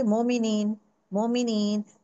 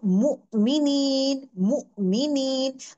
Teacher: जब आपके होठ गोल करते हैं ना, तो परफेक्ट लेवल से मु आता है।